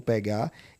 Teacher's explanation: E pegar, tenho duas sílabas, a tônica é a última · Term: oxítona